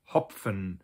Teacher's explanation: you actually do kind of pronounce the P and the F separately